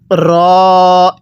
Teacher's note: আর র এর উচ্চারণ হবে জিহ্বার আগার পিঠ সেই বরাবর উপরের তালুর সাথে লাগাইয়া র টা উচ্চারণ হবে